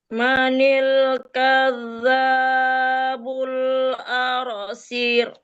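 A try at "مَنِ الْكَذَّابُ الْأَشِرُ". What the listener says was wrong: Ibu kurang teliti banget ya. Kadzabul asyir. Jangan arsir. Enggak ada al.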